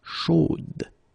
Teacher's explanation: So here you pronounce the final D, whereas in the masculine form you don't pronounce it.